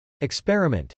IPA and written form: ɪkspˈɛrəmənt (experiment)